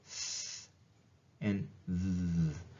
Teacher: Interdental, though, does exist in English, and that's when your tongue moves between your teeth.